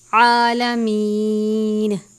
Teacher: عین کو بھی باریک پڑھتے ہیں حلق سے